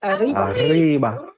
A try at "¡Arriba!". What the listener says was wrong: Come on, we're gonna roll them tongue.